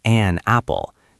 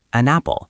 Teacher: The N at the end of the word an moves over and grabs onto the word apple.